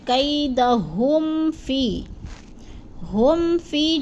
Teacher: اب آگے ہے کیدہم فی، ہم فی جو ہے نا ادھر ہے اظہار شفوی ہو رہا ہے، میم ساکن کے بعد فا آ گیا ہے، تو اظہار شفوی، ادھر ہم نے غنہ نہیں کرنا بلکہ لفظ کو ظاہر کر کے پڑھنا ہے